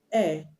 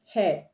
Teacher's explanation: For example, the word air, HEIR, the H is silent, but the word hair, HAIR, the H is not silent.